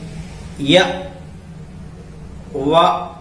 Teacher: तो अब देखिए अर्धस्वर। अर्धस्वर इसके उच्चारण में मुख से वायु बिना संघर्ष की निकलती है, संघर्ष करना नहीं पड़ता है।